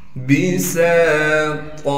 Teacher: سین میں سیٹی ادا کریں گے اور سین کے بعد الف مدہ ہونے کی وجہ سے سین کو ایک الف کے مقدار کھینچیں گے. طا کو موٹا کر کے پڑھیں گے اور طا پر جب وقف کریں گے پھر طا کو ایک الف کے مقدار کھینچیں گے